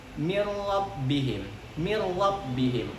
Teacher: idgham bilagunnah itu seakan-akan kita langsung masuk ke huruf selanjutnya